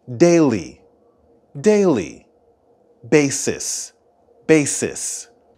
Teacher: the stress for the words daily and basis are both at the beginning